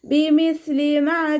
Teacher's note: അറ്റം മേലെ മുൻപല്ലിന്റെ അറ്റത്ത് വെച്ചിട്ട് കുറച്ച് എയർ പുറത്തോട്ട് പോകുന്ന സൗണ്ട് കൊടുക്കുകട്ടോ നാവിന്റെ കുറച്ചു ഭാഗം പുറത്തോട്ട് കാണുന്ന രൂപത്തിൽ വെച്ചിട്ട് എയർ പാസ് ചെയ്യുന്ന സൗണ്ടും കൊടുത്തിട്ട് ലൈറ്റ് ആക്കിയിട്ട് ഓതുക